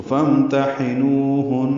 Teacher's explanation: لمبا ہے، ہن میں نون مشدد پہ غنہ ہے، تو فامتحنوہن، یہ وقفاً غنہ کر کے آواز کو روک لیا ہے، یعنی سانس توڑ دیا، نون کو ساکن کر دیا